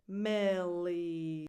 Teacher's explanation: The first vowel is a lax I. The second one is more of a tense E